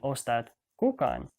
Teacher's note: that second K is dropped off and then an N is added to the end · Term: consonant gradation